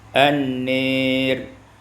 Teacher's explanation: dibaca imalah fathah nun dan alif